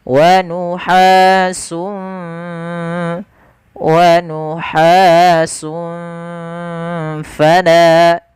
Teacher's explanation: Fa alirkan nafas, jangan diganti dengan pala.